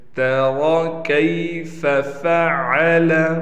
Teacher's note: تری کیف فعل، یہاں را کو موٹا پڑھیں گے لیکن کاف کا بھی خیال کرتے ہوئے کہ کاف ہم سے کہیں موٹا نہ ہو جائے، کاف کو بالکل باریک پڑھنا ہے